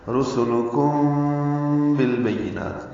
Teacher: میم ساکن کے بعد با آنے کی وجہ سے اخفاء شفوی ہے · نون کو لمبا کریں گے وقفاً، تا ساکن پہ ہمس ہوگا